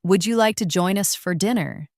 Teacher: the question with a rising tone